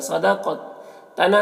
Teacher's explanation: صاد کو پر پڑھیں گے، قاف کو بھی پر پڑھیں گے اور قاف میں قلقلہ ہوگا